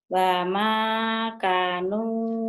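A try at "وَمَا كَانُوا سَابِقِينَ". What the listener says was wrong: K-nya panjang, Bu. Wa ma kanu sabiqina. Ki juga panjang. Wa ma kanu sabiqina. K-nya panjang. Wa ma kanu. Wa ma kanu sabiqina.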